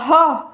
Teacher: ह ऐसा लगेगा गले से आवाज़ निकल गई, गला से हवा निकल गई है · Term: कंठीय